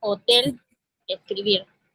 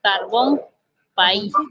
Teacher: Vamos a tener la mayor fuerza de voz en la última sílaba. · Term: palabras agudas